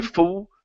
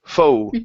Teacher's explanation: Go quickly through that O into an oo. Don't push so much on the oo though. So you don't want to say foo.